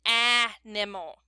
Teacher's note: the very first a says ah in an animal that last a says the UH sound it actually makes the schwa sound